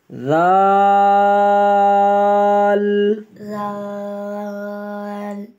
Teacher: زال میں سیٹی کی آواز نہ ہو، زبان کی نوک سامنے والے دانتوں کے ساتھ